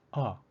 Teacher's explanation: it is the vowel a but its pronunciation is different it sounds like a short o